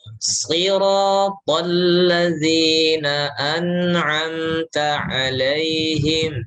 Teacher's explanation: ada nun, ada mim, itu jelas izhar tapi dialirkan